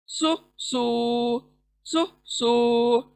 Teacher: पुर पढ़े जाने वाला लेटर सौद, सु सू सु सू। गोल अदा करेंगे, गोल सीन के जैसा अदा नहीं करेंगे, गोल अदा करेंगे, सु सू सु सू।